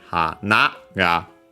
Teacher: ha, na, ga, low, high, low. Because when we don't add anything else, it would sound the same as an unaccented word. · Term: accented on the last mora